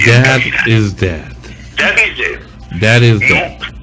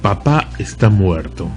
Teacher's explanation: Cuando el actor dice en original "Dad is dead", su boca está completamente abierta, nunca pega los labios porque no hay ninguna labial.